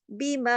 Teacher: بی کو تو ہم نے تھوڑا سا رکھا لیکن ماں کو ہم نے دو حرکات کھینچا